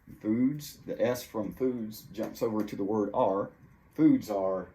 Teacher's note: the S from foods jumps over to the word are